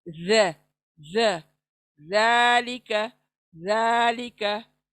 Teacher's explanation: जबान चौड़ी होती है लेकिन सामने के दांतों को लगती है, बाहर आकर बाहर आती है जबान, और सॉफ्टली अदा करें। ज ज ज़ालिका, ज़ालिका, सख्ती बिल्कुल नहीं, सॉफ्ट नरमी के साथ।